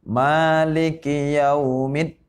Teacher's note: Ingat di sini mimnya hurufnya panjang, 2 harokat. Yang mana hukumnya adalah mad tabi'i.